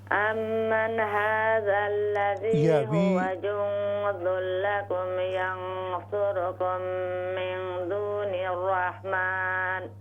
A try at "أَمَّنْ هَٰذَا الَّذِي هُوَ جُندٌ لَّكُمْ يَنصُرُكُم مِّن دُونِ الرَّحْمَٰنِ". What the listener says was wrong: We do not bounce noon at the start. We don't say ammanna.